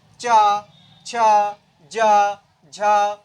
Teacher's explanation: हैं तो तालब व्यंजन वो होते हैं जिनका उच्चारण करते समय हमारी जीभ का अगला भाग तालू को स्पर्श करता है